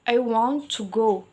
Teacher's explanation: stresnya itu ada pada kata want dan go.